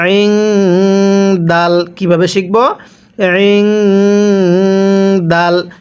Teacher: নুন সাকিনের পরে যদি ইকফার হরফ থাকে অর্থাৎ এই দালটি থাকে তাহলে আমরা এই নুন সাকিনটিকে গুনাহ করে পড়ব।